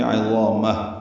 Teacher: عظامہ میں ضا پر ہے اور یہ الف مدہ ہے، 2 حرکات لمبا ہے، میم کو ہا سے ملا دیں گے، عظامہ، ہا ساکن پہ ہمس ہوگا وقفاً